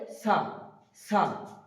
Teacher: সা বলার সময় আমরা মনে রাখবো সাটা হালকা তুতলা টাইপের হবে, যেমন তোতারও একটু তোতলা টাইপের, তা যেমন স্পষ্ট হচ্ছে তেমন হবে না, সা একটু তুতলা হবে, জিভটা সামনের দিকে একটু বেরিয়ে আসবে দাঁতের সামনে